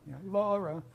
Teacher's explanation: there's a higher note, la, and a lower note, ra.